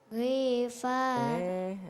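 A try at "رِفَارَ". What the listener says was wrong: Ri-nya pendek. Gimana kalau pendek?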